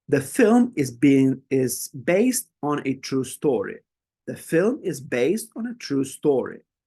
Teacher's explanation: In this case, we're highlighting film, based, and true story. Okay, so you can hear how the voice rises up when we're pronouncing each of these words.